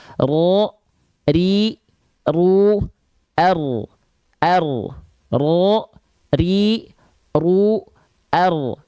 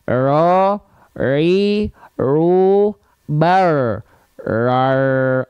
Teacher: jadi getarannya sedikit walaupun sedikit tetap tegas lugas dan jelas tidak juga dia hilang getarannya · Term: getaran huruf ro